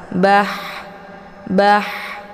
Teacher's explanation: saat dibaca ha sukunnya itu dialirkan dengan desis angin yang agak samar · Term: hamas